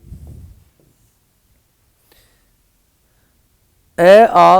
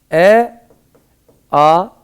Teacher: इनका उच्चारण स्थान जो है वो कंठ होता है। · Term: कंठ ध्वनियां